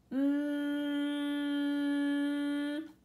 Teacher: Your voice is turned on, but the sound is actually coming from a little tunnel, the little holes in your nose. · for M, this time you're gonna press your lips together to make the sound for M. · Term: nosy neighbor